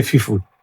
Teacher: the Hausa man will say fifu. Yes, the P becomes F and the F becomes F.